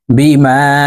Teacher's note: এই মিমকে তিন আলিফ টেনে পড়ব